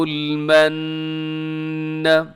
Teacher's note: یہاں من پہ میں نے غنہ کیا، اس کی وجہ یہ ہے کہ یہاں نون کے اوپر شد ہے، تو جب بھی نون کے اوپر شد ہو آپ نے غنہ کرنا ہے۔